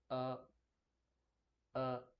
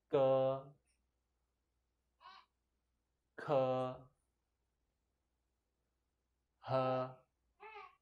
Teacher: The sound is a bit deeper, but more relaxed. Uh it's not like the English uh. It's It's shorter.